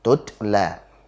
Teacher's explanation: Polanya T, hanya kemudian ada nafas yang mengalir secara otomatis saat kita tabrakan lidah kita ke makhrajnya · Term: sifat hamas